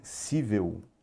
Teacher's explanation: a sílaba tônica não é a última é a penúltima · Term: paroxítona